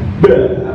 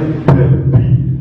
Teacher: ba itu sifatnya kan harus jahar dan syiddah. Artinya nafas gak boleh banyak yang keluar. Ya. Suara harus tekan ba, maka nggak boleh bi, nggak boleh.